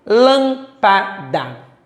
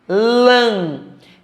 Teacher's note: observamos que a sílaba mais forte é a antepenúltima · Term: proparoxítona